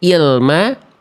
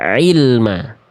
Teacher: Kalau hamzah lebih dalam, kalau ain lebih luar. Hamzah di tenggorokan pangkal bawah, ain di tenggorokan pertengahannya.